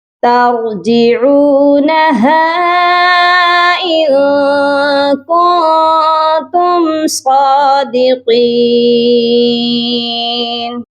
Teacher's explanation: صاد کو بھی موٹا کریں گے اور قاف کو بھی موٹا کر کے پڑھا جائے گا